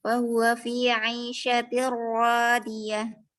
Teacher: idgham kamil, yaitu tidak ada yang tersisa dari nun sakinah karena telah melebur sepenuhnya hurufnya lam, ro, nun, dan mim.